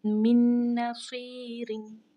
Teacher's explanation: अब देखें नून भी हरूफ यरमलून में से है, तो अब क्या है कि अब हमने इस मीम को इस नून के साथ हमने इसका इदगाम किया है। इस नून साकिना को हमने ज़ाहिर नहीं होने दिया।